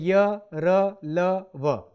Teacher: इन व्यंजनों का उच्चारण स्वर तथा व्यंजन के मध्य का सा होता है। उच्चारण के समय जिह्वा मुख के किसी भाग को स्पर्श नहीं करती। ये व्यंजन 4 होते हैं, जैसे य, र, ल, व। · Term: अंतःस्थ व्यंजन